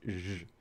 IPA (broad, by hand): ʒ